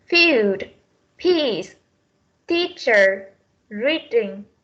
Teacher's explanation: Trong phiên âm tiếng Anh, âm này là âm Y và chúng ta sẽ kéo dài hơn